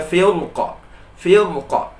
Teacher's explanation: ayat ini diwakafkan pada kata firqin, di sini kita wakafkan, maka huruf ro sukun ini dibaca tebal